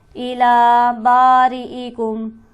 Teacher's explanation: الا کے نام پر کھڑی حرکت موجود ہے، اسے ہم کھینچیں گے ایک الف کے برابر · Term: حرف مدہ